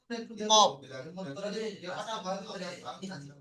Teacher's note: জিভের গোড়া বরাবর উপরে তালুর সাথে লাগিয়ে উচ্চারিত হয় কফ